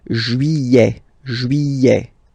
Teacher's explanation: Don't pronounce this final T, E-T here at the end.